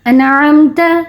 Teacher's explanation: اظہار کا قاعدہ اپلائی کرتے ہوئے نون ساکن کے بغیر غنے کے پڑھا